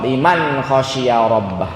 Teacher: Kalau ada nun sukun dan tanwin bertemu dengan salah satu huruf tadi, nun sukun dan tanwinnya dibaca an. Cukup an saja. Tidak perlu ditambahin dengungnya. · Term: izhar